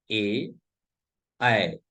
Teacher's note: ए और ऐ का उच्चारण स्थान कंठ तालु है।